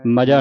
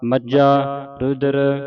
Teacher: ਇਸ ਨੂੰ ਕੱਸ ਕੇ ਬੋਲਣਾ ਹੈ ਮਜ਼ਾ ਨਹੀਂ ਬੋਲਣਾ ਅਧਕ ਲਾ ਕੇ ਉਚਾਰਨ ਹੋਵੇਗਾ